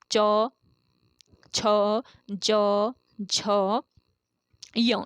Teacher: तो च वर्ग जो है आपके जितने भी व्यंजन आते हैं च वर्ग में, इन सभी व्यंजनों का उच्चारण कहाँ से होता है? तालु से होता है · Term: तालव्य व्यंजन